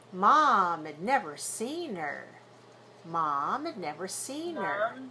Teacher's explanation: We got to get rid of those two h's of her and had, and we have to reduce them. · We know that we don't pronounce h when it comes at the beginning of an unstressed function word, right? We link it together.